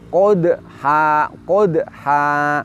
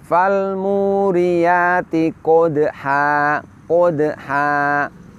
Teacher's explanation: Setelah kita mentafkhimkan huruf qaf, maka ketika kita mengucapkan huruf dal sukun, bibir kita harus mundur supaya praktek dari tarkik huruf dal itu benar